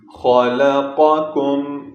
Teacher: قاف کو موٹا کر کے پڑھیں گے، خا کو بھی موٹا پڑھنا ہے